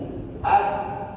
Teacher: Bibir namanya, bibir dengan bibir ketemu. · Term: qalqalah